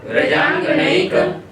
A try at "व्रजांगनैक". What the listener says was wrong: का में आ सुनाई पड़ना चाहिए, ककार के बाद आकार सुनाई पड़ना चाहिए। व्रजांगनैक